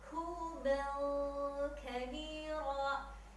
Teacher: bunyi nun sukunnya atau bunyi tanwinnya samar-samar dan ditahannya 3 ketukan